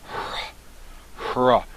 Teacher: But it's always with a rough breather mark in the beginning of a word, and it's pronounced hra, like a breathy R.